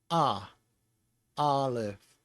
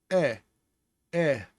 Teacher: Aleph is ah, Aleph. And so you don't use the front part of your mouth, but only the back of your throat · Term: guttural